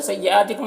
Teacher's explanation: حمزہ میں کھڑا زبر ہے، اسے ایک الف کے برابر کھینچیں گے۔ کم کے میم میں اظہار شفوی ہو رہا ہے، اسے جلد پڑھنا ہے۔